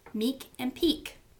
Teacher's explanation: Meek and peak, same thing. You have an m, which is a bilabial, and p, which is a bilabial